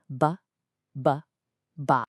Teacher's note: It is not the same as the English b. You bring your lips together to make the sound, but, and this is key, with no puff of air and absolutely no vibration in your throat. It's a flat, stopped sound.